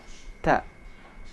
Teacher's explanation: Cara mengucapkan huruf ta, lidah tidak boleh dikeluarkan. Cara mengucapkan huruf ta ini, ujung lidah menempel di belakang gusi atas.